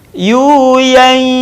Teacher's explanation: dengan nun mati tanwin yang berwarna saat bertemu dengan huruf ya tahan suaranya dan keluarkan sebagiannya dari rongga hidung kita